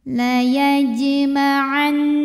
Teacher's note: Karena ada huruf qalqalah yaitu jim yang sukunnya sukun asli dan ada di tengah bacaan. Maka cara membunyikannya adalah dipantulkan jimnya dengan pantulan yang kecil dan dialirkan. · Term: qalqalah sughra